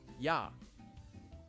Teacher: the vowel ya is actually a combination of the vowel sound e and the vowel ah. If you say e and ah quickly, it sounds like ya.